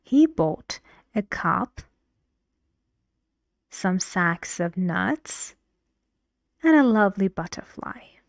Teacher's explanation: All rising up to the last word, the last stressed syllable, which is falling. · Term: intonation